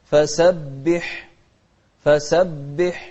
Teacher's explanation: شوف الحاء من أحرف الهمس